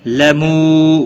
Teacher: واو مدہ ہے، ایک الف کے برابر کھینچ کر پڑھیں گے